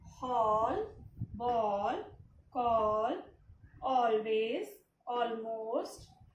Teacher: Long O sound. The spelling is A and the words are pronounced with long O sound